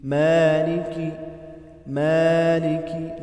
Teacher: مالکی میں لام باریک پڑھا جائے گا، کاف بھی باریک پڑھیں گے